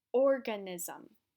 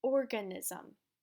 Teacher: So for example, I will say this word, organism. Did you hear how I pronounced the beginning part a little bit longer?